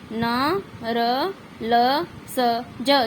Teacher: इन वर्णों के उच्चारण में जीवा वर्ष तालू का स्पर्श करती है